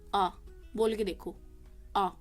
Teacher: विवृत स्वर, जिसमें आपका मुंह जो है पूरा का पूरा खुलेगा।